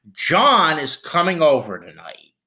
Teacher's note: at the end you go down you kind of walk it down